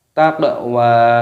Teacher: qafnya berharokat sukun dipantulkan suaranya